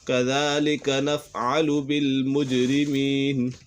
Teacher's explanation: جیم کے اوپر قلقلہ ہو رہا ہے